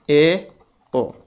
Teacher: मुख द्वार के अर्ध संकुचित होने पर जो स्वर निकलेंगे उनको कहा जाएगा अर्ध संवृत